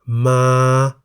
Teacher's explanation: The single syllable in the word มา is a live syllable because it ends with a long vowel สระ อา